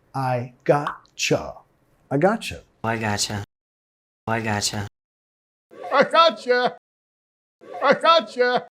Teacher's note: Gotcha es una contracción informal, pero ahí estamos también reduciendo el you a un ya.